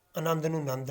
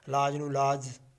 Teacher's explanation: ਇਹ ਵੀ ਸਵਰ ਅਲੋਪ ਦੀ ਇੱਕ ਨਿਸ਼ਾਨੀ ਆ